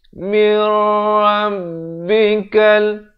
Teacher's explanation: nun mati masuk ke dalam ra. Daripada min jadi mir. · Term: idgham bila gunnah